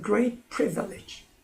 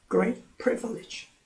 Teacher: 그런데 great와 privilege 이렇게 수식 관계가 될 때는 형용사도 내용어고 명사도 내용어지만 명사에 더 큰 강세가 있다고 했고 더 큰 강세가 있지만 음절이 privilege 3음절이 되니까 제1 그 단어 강세가 있는 곳에 강세가 와서 great도 강하지만 단음절 그다음에 pre 하는 부분이 강하게 읽어지고 나머지는 약합니다